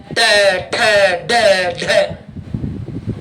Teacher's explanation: ट वाली पूरी लाइन बोलकर देखो, जीभ को मोड़कर धक्का देना पड़ता है.